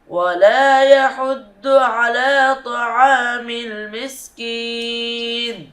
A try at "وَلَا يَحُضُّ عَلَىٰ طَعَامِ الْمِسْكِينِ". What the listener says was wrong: তবে ওয়ালা ইয়াহুদ্দু হয়ে গেছে, এটা দাল হবে না, এটা হবে কি দোয়াদ। দোয়াদের মাখরাজ কোথায় বলতে পারবা? দোয়াদের মাখরাজ হলো জিহ্বার গোড়ার কিনারা উপরের মাড়ির দাঁতে গোড়ার সাথে লাগিয়ে।